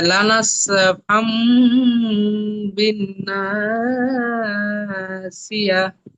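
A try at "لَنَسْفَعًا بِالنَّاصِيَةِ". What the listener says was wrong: ফাম বললে হবে না, লানাস ফাআম।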